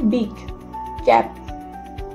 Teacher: পি মানে এখানে ঠোঁট বন্ধ করে হালকা শব্দ। বি একটু ভারী।